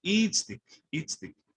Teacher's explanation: Notice how I'm putting the stress on the first I.